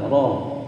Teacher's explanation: ro-nya tebal, ro, karena ro berharokat fathah